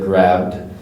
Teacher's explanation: grabbed and that's not an i that's just a D sound